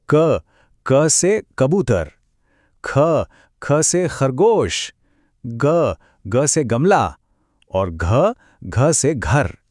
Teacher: इन सब की आवाज गले के पिछले हिस्से से आती है, एकदम अंदर से। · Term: क वर्ग